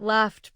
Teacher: GH represents an F sound at the end of laugh. F is voiceless, so laughed takes T.